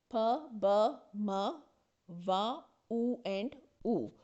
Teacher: These six sounds cannot be produced without rounding or touching of lips. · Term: लेबियल साउंड्स